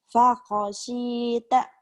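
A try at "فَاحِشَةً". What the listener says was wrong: Fakhoshita. Shin-nya. Shin. Fakhoshi. Kurang angin.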